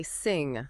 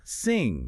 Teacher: The tip of your tongue is down. The back of the tongue blocks the throat. It's a completely different mechanism.